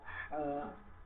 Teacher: গলা থেকে নরম, একদম নরম করে আমরা হা উচ্চারণ করবো